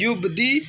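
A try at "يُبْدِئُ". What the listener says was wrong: जो मैंने लफ्ज़ पढ़ा ना युबदी उ, इसका या नहीं पढ़ेंगे, हमज़ा पढ़ेंगे, ठीक है।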